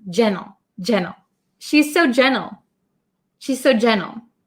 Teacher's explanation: when I say it quickly as an American English speaker I often cut the T sound